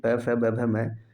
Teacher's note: प वर्ग का उच्चारण स्थान ओष्ठ ध्वनि से होता है